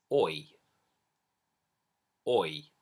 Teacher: It starts on this very sort of forward placed, lips forward, or sound, like the or in port or law, and then it moves. The lips come back, relaxing, and you end up in this sort of I shape. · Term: oi diphthong